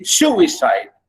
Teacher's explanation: a stress syllable followed by two unstressed syllables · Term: dactylic